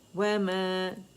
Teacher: وَمَا خالی الف سے پہلے زبر آ رہی ہے تو مد اصلی بن رہا ہے. 2 کاؤنٹ کھینچیں گے